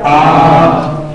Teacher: ایک الف لمبا کر دیں اسے. ایک الف کا مطلب 2 سیکنڈ. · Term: الف کھڑا زبر